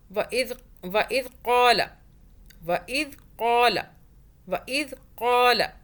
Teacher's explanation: ذال کو سافٹ پڑھنا ہے، زبان کو باہر کیجیے، ادا ہو جائے گا۔